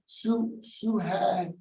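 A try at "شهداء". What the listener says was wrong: No, Shuhadad. Shuhadad. Shuhadad. You got a Hamza at the end. Hamza.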